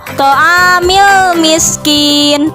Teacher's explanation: alif lam bertemu dengan huruf qamariyah yaitu huruf mim, maka lam tersebut dibaca jelas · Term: alif lam qamariyah